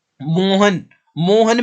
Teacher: अगर आप मोहन को आवाज लगाओगे तो आप मो को ही खींचोगे, ह और न को नहीं खींचोगे।